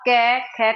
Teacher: जब आप कै, ख का उच्चारण करेंगे तो आपको आपके मुख में जो कंपन है उसका एहसास नहीं होगा